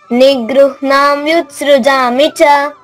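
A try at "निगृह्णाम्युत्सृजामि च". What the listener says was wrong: Very good very good.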